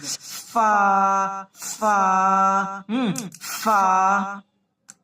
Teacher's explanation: উপরের দাঁতটি নিচের ঠোটের ভিজা অংশে লাগবে এবং মুখ থেকে একটু বাতাস হাওয়া বের হবে